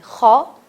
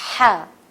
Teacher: خو میں زبان رگڑ کھا رہی ہے, زبان میں وائبریشن آ رہی ہے, زبان ٹکرا رہی ہے, لیکن ہا میں ٹکرائے گی نہیں.